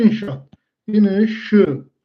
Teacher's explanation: 2 dənə encisi sait yanaşı gələndə, onun biri düşür, biri uzun tələffüz olunur.